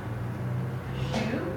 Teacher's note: So we have shu, which is pronounced like she with the lips rounded.